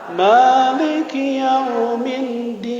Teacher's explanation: Ma-nya panjang ya, 2 harokat. Ma diayun aja.